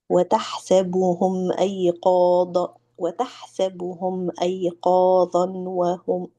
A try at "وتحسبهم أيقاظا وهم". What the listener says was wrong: Hey, where's the idgham?